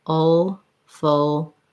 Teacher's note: the full is a syllabic l so there's a little short schwa before the l